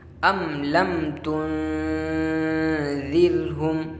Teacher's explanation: دونوں میم کو ظاہر کر کے پڑھیں گے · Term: اظہار شفوی